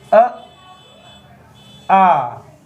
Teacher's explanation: ये बोले जाते हैं दोस्त कंठ से